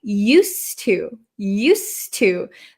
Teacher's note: this D kind of disappears because it's followed by a t